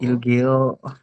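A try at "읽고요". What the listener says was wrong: ilgoyo. Ini tulisannya geo tapi dibacanya go. Kenapa saya tuliskan geo? Karena ini O samping. Ya, kalau O samping itu kan EO. Coba lagi dicek di atas itu yang vokal tunggal. Ya, ini kan suku kata pertama kita bacanya adalah il. Jadi hanya il saja.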